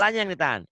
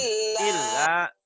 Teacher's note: Lanya yang ditahan. Ilnya jangan ditahan. illa Illa. Ilnya double doang.